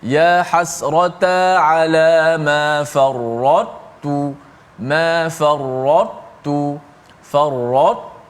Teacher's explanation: Maknanya ta sifat itba' ta tu dikekalkan. Sifat tebal ta itu dikekalkan, kemudian baru masuk ke dalam huruf ta tanpa qalqalah. · Maka caranya dibaca secara idgham naqis. Masuk juga ta kepada ta, tapi masuk sebahagian sahaja. Maknanya ta sifat itba' ta tu dikekalkan.